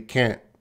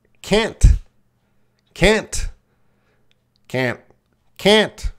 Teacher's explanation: sometimes it's not stressed. It's reduced. So they'll just say it very quickly, can't. There is a T there, can't. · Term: reduced sound